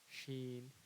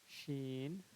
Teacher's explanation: जो ज़ुबान के बीच का हिस्सा है, ठीक है, उसको ऊपर के तालू में सटाएंगे ज़ुबान को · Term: शीन का तलफ़ुज़